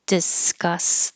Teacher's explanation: don't say the K hold your tongue in the K position